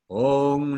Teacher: So the dot over an M indicates we close our lips together in front and at the same time close the back of our tongue to the back of the roof of our mouth